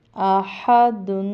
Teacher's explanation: حمزہ پڑھی زبر آ، ہا پڑھی زبر ہا، آہا دال دو پیش دن، آہادن۔ اب یہاں پہ ہا کے تلفظ پہ بہت دھیان دینا، یہ حلق سے نکلے گا